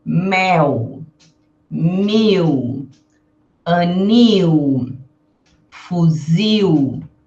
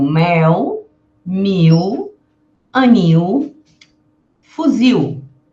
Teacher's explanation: as palavras que terminam com L eu pronuncio como se fosse um U